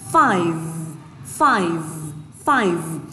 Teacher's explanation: Âm 5 thì các bạn phải rung ở đầu khu vực răng và lưng và môi. Và trong cái dây thanh âm của mình, cái vocal cord này, các bạn phải có vibration, phải có rung ạ · Và trong cái dây thanh âm của mình, cái vocal cord này, các bạn phải có vibration, phải có rung ạ, được chưa? So there is a strong vibration in the V sounds.